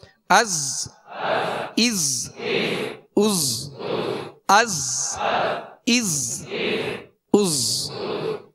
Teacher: سطر نمبر 2، حمزہ زا زبر از، اب اس کو از ایسے نہیں پڑھنا بلکہ از، حمزہ زا زیر از، حمزہ زا پیش از، اس میں سیٹی کی آواز ہوگی، زا کو سختی سے ادا کرنا ہے، سیٹی کی آواز ہوگی، از از از از از از۔